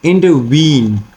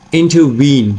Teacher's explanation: the last syllable is stress whereas the first two syllables are unstress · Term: anapestic